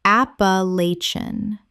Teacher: 5 syllables with the stress on the third, and the ending collapses.